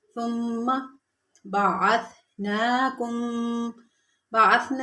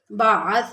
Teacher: ثا نرمی والے حروف میں سے ہے، یعنی اس میں سیٹی کی آواز بالکل نہیں آنی چاہیے۔ بعث یعنی زبان کے کنارے کو اوپر والے دانتوں کی جو آگے نوک ہے، سرہ ہے، اس سے لگائیں گے تو ثا ادا ہوتے ہیں۔